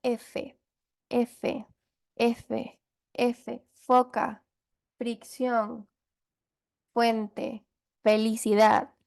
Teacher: fonemas que surgen por la fricción entre el labio inferior y los dientes superiores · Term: labios dentales